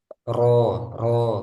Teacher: ro, ro, ada gitaran tapi hanya dua gitaran aja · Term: takrirnya